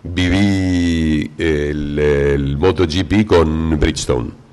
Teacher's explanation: el remate siempre es para abajo